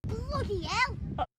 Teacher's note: so the Y from bloody links to the e in L because we've already skipped the H so instead of bloody hell the Y moves over and you get bloody yell